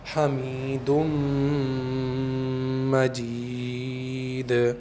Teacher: اسی کو کہتے ہیں ادغام باغنہ، یعنی اس طرح سے ادغام کیا جائے، اس طرح سے ملایا جائے کہ غنے کی آواز باقی رہے۔